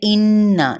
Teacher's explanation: नून पे गुन्ना करेंगे, बाकायदा तौर पे नाक में आवाज़ को ठहराएंगे